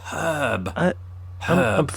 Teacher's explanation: we don't pronounce the r in in herb as Brits